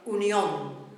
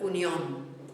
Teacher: throwing the beat onto the ending, but it's still a two-syllable word